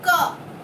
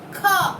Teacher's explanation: क, ख, क और ख, ये दो वर्णों में अगर हम क वर्ण उच्चारण करते हैं तब ऐसे हाथ लगाकर, हाथ रख के आप लोग महसूस कर सकते हो कि क वर्ण जब हम उच्चारण करते हैं हवा निकलती है कम मात्रा में, और ख वर्ण जब उच्चारण करते हैं तो अधिक मात्रा में हवा निकलती है। तो जो वर्णों को उच्चारण करते समय हवा कम मात्रा में निकलती है वह है अल्प प्राण, और जिन वर्णों को उच्चारण करते समय हवा अधिक मात्रा में निकलती है वह है महाप्राण।